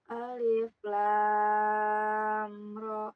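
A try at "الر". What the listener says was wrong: Ya, amnya jangan ditahan ya, jangan lama.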